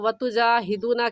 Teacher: گے، بلکہ دال کے بعد واو ہے اور واو ساکن ہے، واو ساکن سے پہلے پیش آ جائے تو واو مدہ بن جاتا ہے، اور واو مدہ کو ایک الف کی مقدار کھینچ کر پڑھتے ہیں۔